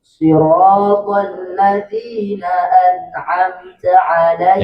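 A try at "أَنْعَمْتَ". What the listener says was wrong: Jangan sa. Ta itu dia nampak angin ketika sukun. Kalau dia dalam keadaan fathah, dalam keadaan berbaris tidak nampak. An'amta ta.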